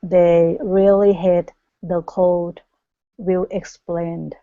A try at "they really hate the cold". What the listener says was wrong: let's get that e sound to come out here